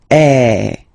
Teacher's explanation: the sound is really open, and normally your mouth should be opened a little bit more than with the accent aigu as well. Okay, so it goes like eh. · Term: accent grave